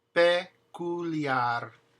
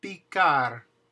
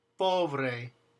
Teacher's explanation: So let's look at these words and pronounce them without the puff of air behind it.